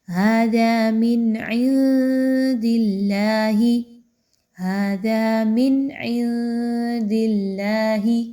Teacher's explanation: نون ساکن کے بعد دال ہے تو یہاں پر اخفا کیا جائے گا، نون کی آواز کو چھپایا جائے گا، کلیئر نہیں پڑھنا۔